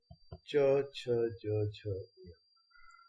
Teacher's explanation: इनको बोलते समय तालु का उपयोग होता है, इसलिए ये तालव्य व्यंजन कहलाते हैं।